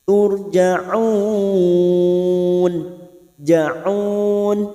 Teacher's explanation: ra sukun yang sebelumnya dumah, kita baca tafkhim atau tebal. Turja'un, ja'un, mat arid li sukun bertemunya mat dengan huruf hidup yang dibaca waqaf.